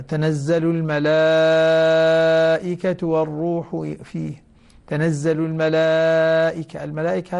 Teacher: يمد المد المتصل 4 حركات أو 5، ويسمى مد واجب متصل